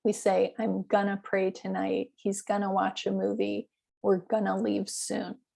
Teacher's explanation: we will pronounce going to as gonna when we're using the future tents especially in north america we